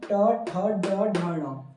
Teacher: उसी प्रकार से अगर मैं बात करूं ट ठ ड ढ ण आपका मूर्धन्य, मतलब इनको उच्चारित करते समय जो है हमारा जो जीभ है वो मुड़ जाता है और जिस कारण से इसे आपका जो है मूर्धन्य की श्रेणी में से रखा गया है।